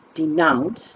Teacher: Denounce, the stress is nounce.